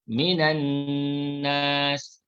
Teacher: Kemudian minan nasi idgham syamsi bi gunnah, ataupun alif lam syamsiyah bi gunnah. Kita masukkan lam ke dalam nun, kemudian kita dengungkan.